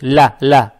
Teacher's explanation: Лам с фатхой. Фатха приобретает оттенок я